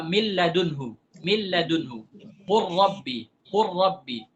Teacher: Jadi itu huruf nun sudah jadi huruf lam. Huruf lam sudah jadi huruf ra, 100%. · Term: Idgham kamil